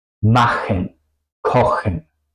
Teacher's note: Excepciones serían si la CH es después de las letras A o U o AU. En ese caso es un poco más como una J española. En ese caso se usa la garganta.